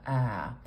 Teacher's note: we make the sound with a really open mouth our jaw is very low and our tongue is more forward in our mouth it it's it's almost filling up our lower Dental Arch so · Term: Trap vowel